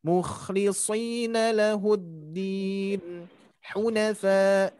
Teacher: Kalau itu menjadi sin, hati-hati. Tapi huruf shad itu ketika dikasrohkan bunyinya soy ya.